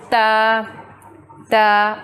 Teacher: जो ज़ुबान की टिप है, नोक है, वो सामने वाले 2 दांतों के जड़ के साथ जाके मिलती है, तो फिर बनता है ता ता।